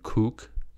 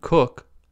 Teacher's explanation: the first word has a tense vowel /u/, and the second has a lax vowel /ʊ/.